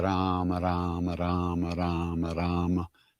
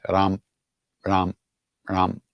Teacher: You can't say the M without a little partial vowel.